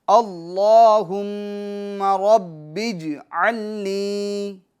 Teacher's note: ربج علنی، عین کو واضح کریں گے، نی میں یا مدہ ہوگا، اس کو 1 الف کی مقدار کھینچیں گے